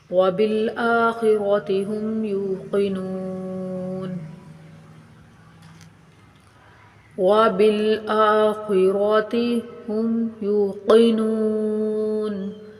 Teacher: قا را موٹے حروف ہیں، موٹے پڑھے جائیں گے، اور قاف بھی موٹا حروف ہے، یہ بھی موٹا کر کے پڑھا جائے گا.